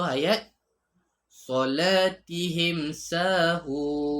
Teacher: bunyi mim disebut dengan jelas tanpa dengung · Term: izhar syafawi